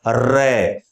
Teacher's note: हमारी जीभ जब र का उच्चारण करती है तो लुढक हुई सी आती है · रे का जब हम उच्चारण करते हैं तो हमारी जिह्वा में एक कंपन होता है, यानी आप खुद रे बोलकर महसूस करेंगे तो जिह्वा में वाइब्रेशन होगा, कंपन होगा। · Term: लुंठित, प्रकंपित व्यंजन